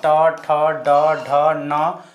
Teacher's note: मुर्धा बोलते हैं तालुक से थोड़ा अंदर वाला जो भाग रहता है उसको बोला जाता है मुर्धा